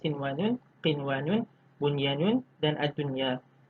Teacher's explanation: Okey, sekiranya pertemuan nun mati atau tanwin berlaku dalam satu kalimah, maka hendaklah dibaca dengan jelas, terang dan nyata tanpa ada dengung kerana hukumnya adalah izhar mutlak.